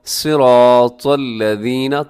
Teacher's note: تو کو اپنے موٹا پڑھنا ہے، صاد کو بھی موٹا پڑھنا ہے. اور آگے الذین، اس میں ذال کا خیال کرنا ہے، کیونکہ اسے اکثر زا پڑھ دیا جاتا ہے، صراط الذین، تو بلکہ کیسے پڑھنا ہے، صراط الذین، نرمی کے ساتھ پڑھنا ہے، اور اس ذال میں سیٹی نہیں ہوتی.